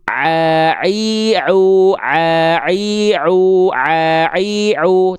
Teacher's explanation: jangan biarkan huruf ain itu si tengah tenggorokannya suaranya masuk ke rongga hidung tapi ke rongga mulut semua